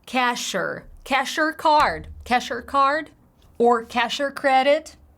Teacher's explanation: cash or uh are you going to pay with your card they literally shrink it to cash and then they link the words together